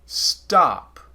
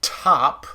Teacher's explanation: we don't tend to aspirate the t on stop as much as we aspirate the t on top